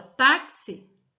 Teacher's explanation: e quando nós pronunciamos a palavra taxi o som do x sai com som de KS